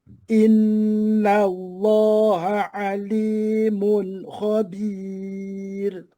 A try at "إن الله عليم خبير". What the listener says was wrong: Usah bunyi ha dengan ain tu jangan sambung. Inna Allah ali ali. Mana di antara pisah di antara dua tu adalah rungga. Jangan ha ali, itu tak edi. Inna Allah.